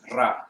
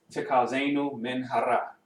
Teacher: You gotta roll the resh, the R sound.